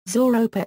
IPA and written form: zuːˈroʊpɑː (Zooropa)